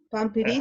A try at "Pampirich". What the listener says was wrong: Pambirich, sí. Sí, es que la escribiste como Pampirich, porque está bien, es con P, pero se pronuncia Pambirich. Te faltó un poquito ahí en las aspiradas, pero súper bien?